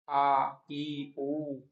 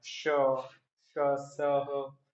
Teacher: ईशत विवृत, तो विपरीत में जैसे हमारा मुंह खुलता है आ ई ऊ, लेकिन इनमें कम खुल रहा है श स ह